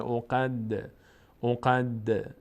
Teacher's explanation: دال هم از حروفی هست که میلرزه در مخرجش در هنگامی که ساکن است، میشه او قد، او قد، نمیگیم او قد، او قد، او قد، نه او قد. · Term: قلقله